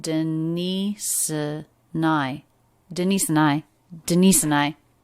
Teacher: denise and i and it's really smoothly linked together the ending s sound links into the schwa denise and i and then the n sound links right into the i diphthong